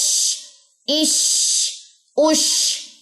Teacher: اور شین میں تفشی، پھیلاؤ، آواز پھیلے گی. · اس کی صفت ہے آواز پھیلے گی، لیکن استعمال زبان کا درمیان ہی ہوگا. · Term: شین کا مخرج